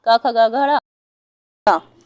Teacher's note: जो का वर्ग होता है का ख गा घ ड़ा, तो ये कंठ से निकलेगा